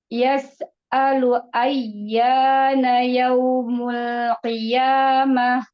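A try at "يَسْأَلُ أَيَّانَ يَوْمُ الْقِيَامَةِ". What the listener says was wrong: Jangan ini. Jangan dijeda sinnya ya, sinnya rolah.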